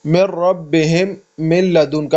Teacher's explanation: یہ ادغام لام را میں بغیر غنہ کے ہوگا